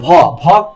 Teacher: ভ ভ কিন্তু হাতে বাতাস বেশি লাগে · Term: মহাপ্রাণ